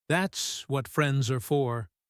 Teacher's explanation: A simple, common phrase, usually said with a gentle, easy falling tone, light and natural, almost like she's brushing off the weight of his thanks because to her, helping him is the most normal thing in the world, not something requiring a big reaction.